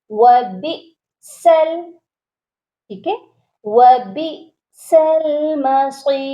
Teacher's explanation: حمزہ کو پڑھنے ہیں وہ بھی جھٹکا دے کر